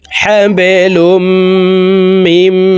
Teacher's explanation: এই মিম সরাসরি তাসদিদওয়ালা মিমের সাথে গুন্নার সহিত পড়ব। মাঝখানে জজমালা নুন বাদ পড়ে যাবে।